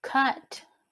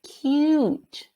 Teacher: again the u is a little bit longer because of the silent e